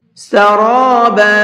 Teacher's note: را کو پر کر کے پڑھیں گے